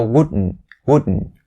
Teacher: the t sound has to be stopped at the end